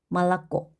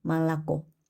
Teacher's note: 첫 번째 있는 모음, 두 번째 있는 모음 오에는 강세가 없어요. 강세 없는 아로 읽기 때문에 말라꼬가 되는 거예요.